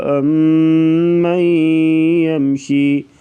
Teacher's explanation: ام پہ بھی غنہ کر کے پڑھا جائے گا، ادغام مع الغنہ